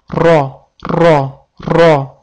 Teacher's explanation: Til uchi va qisman til o'rtasi tepa tanglangimizga tegib turadi va ro deb talaffuz qilinadi. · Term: titrovchi harf